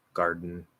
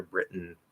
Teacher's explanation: It's just the D is voiced instead of the T being voiceless.